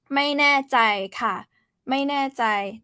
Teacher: แน่ falling tone ใจ mid tone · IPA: mâi nɛ̂ɛ-jai